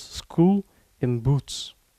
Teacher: when you utter School you already see lip rounding before the oo sound has started